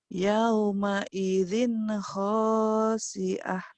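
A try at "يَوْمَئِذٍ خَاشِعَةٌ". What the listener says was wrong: Shinnya mana? Hutang shinnya. Ayo.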